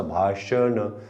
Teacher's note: भाषण तर दाताकडे जिभेला यायला वेळच मिळत नाही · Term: मूर्धन्य